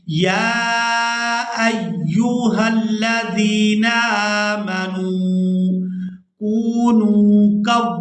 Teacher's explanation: یہاں پر ہم نے یا کو کھڑی زبر اور بد کی وجہ سے کھینچ کر ادا کرنا ہے. حمزہ کو یا مشدد کے ساتھ ملاتے ہوئے سختی کے ساتھ ادا کریں گے